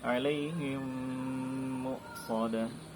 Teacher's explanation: Nah, idgham mimi yaitu apabila mim mati bertemu dengan mim tasydid. Nah, maka cara bacanya itu dengan didengungkan dengan tempo 2 atau 3 harokat.